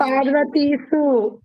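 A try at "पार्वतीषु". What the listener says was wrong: సు కాదు ఇక్కడ షు వస్తుంది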